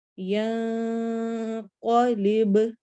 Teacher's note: ینقلب یا میں نون کی آواز کو چھپانا ہے